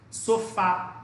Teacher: Você dá ênfase na última sílaba. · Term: oxítona